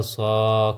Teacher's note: کھڑا زبر بھی ایک الف کے برابر لمبا ہوگا